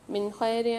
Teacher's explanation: من خیر میں نون ساکن کے بعد خا آ رہی ہے، اظہار ہلکی کے 6 حرفوں میں سے، یہاں پر ہم غنہ نہیں کریں گے، اظہار کر کے پڑھیں گے